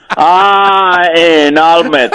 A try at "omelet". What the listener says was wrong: That's what you said. Say omelet. There you go. There's no H. Stop putting H in everything.